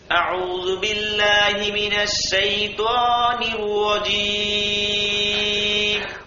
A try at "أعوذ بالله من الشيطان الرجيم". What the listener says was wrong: মাশাআল্লাহ, সুন্দর হয়েছে বন্ধু। ত যদি আরেকটু মোটা হয় তাহলে আরো সুন্দর হবে।